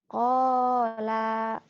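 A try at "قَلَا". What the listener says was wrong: Pendek. Pendek.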